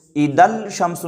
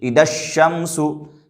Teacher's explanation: نہ الف کو پڑھیں گے نہ لام کو پڑھیں گے، بلکہ لام کے بعد جو حرف ہے یعنی شین اس سے زال کو ملا دیں گے